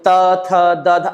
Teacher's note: त, थ, द, ध अपने आप जिह्वा हमारी दांत पर जाती है, तो ये दंत्य स्थान कहलाया